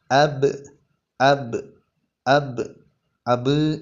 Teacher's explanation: അക്ഷരമാണ് രണ്ട് ചുണ്ടുകൾക്കിടയിൽ നിന്നാണ് ബാഹ് എന്നുള്ള അക്ഷരം ഒഴിയേണ്ടത് നേരത്തെ പറഞ്ഞതുപോലെ തന്നെ കാറ്റ് വരാൻ പാടില്ല ശബ്ദം നീളാനും പാടില്ല · രണ്ട് ചുണ്ടുകൾക്കിടയിൽ നിന്നാണ് ബാഹ് എന്നുള്ള അക്ഷരം ഒഴിയേണ്ടത് നേരത്തെ പറഞ്ഞതുപോലെ തന്നെ കാറ്റ് വരാൻ പാടില്ല ശബ്ദം നീളാനും പാടില്ല അബ് അബ്